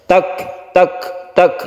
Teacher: Tak tak tak, bukan kolkola, tapi dia meleleh dengan sendirinya. Kita hembuskan nafas ketika kita sukun kaf, itu disebut hamas ya.